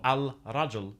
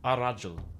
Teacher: the lam, or the L sound, assimilates to the following letter. So al-rajul becomes ar-rajul.